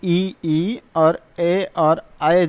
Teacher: मुख का अग्र भाग काम करता है। मुख का अग्र भाग काम करेगा। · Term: अग्र स्वर